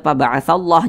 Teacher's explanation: satu ke atas tanda baca fathah namanya atau tanda baca damah maka lafaz Allah dibaca tebal dibaca takhim